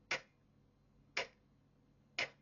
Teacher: the back of your tongue is at the roof of your mouth